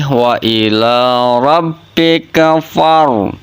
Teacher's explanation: Nah, fa-nya nggak panjang, langsung masuk ke huruf ro. · Hukum bacanya itu tafhim, dibaca tebal hukum ro-nya. Maka bunyinya seperti ini, wa ila rabbika far.